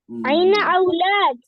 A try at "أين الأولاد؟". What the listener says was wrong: عین الاولاد, دیکھیں پہلے بھی ایک لام ہے.